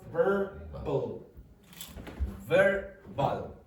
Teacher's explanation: So the V in English is called labiodental. So you have to use your teeth and your lips. The B is just bilabial.